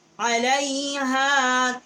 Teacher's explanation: عین بھی حروف حلقی ہے، وسط حلق سے اس کا مخرج ہے. ہا اقصائی حلق سے ہے